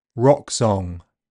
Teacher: In standard southern O is open mid back rounded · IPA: [ɔ]